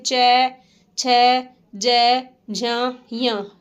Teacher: च वर्ग में च ज झ ञ फिर य और श इनका स्थान उच्चारण स्थान है तालु